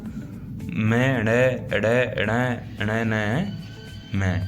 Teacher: सभी वर्गों में पंचम वर्ण का उच्चारण स्थान उनके अपने वर्ग के साथ-साथ नासिका से भी होता है